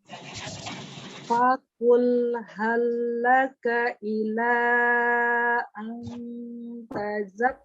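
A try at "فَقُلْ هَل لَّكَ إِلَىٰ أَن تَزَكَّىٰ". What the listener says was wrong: Tazakka. Zainya diberikan sifat rokhawahnya lagi, mengalir suara.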